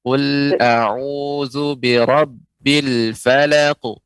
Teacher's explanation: Dan dia huruf qaf ini ya huruf yang tebal, ya huruf isti'la, maka pengucapan qalqalahnya juga lebih tebal.